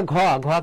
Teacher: মহাপ্রাণ হবে, যেন বাতাস বেশি বের হয়। বা এইভাবে তুমি মনে রাখতে পারো যে যেটা উচ্চারণ করার সময় তোমার বাতাস বের হবে, যেমন ক বাতাস বের হচ্ছে না, এটা অল্প প্রাণ।